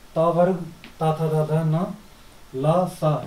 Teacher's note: त वर्ग ता था धा धा न ल स, इनका उच्चारण हम दांतों से करते हैं।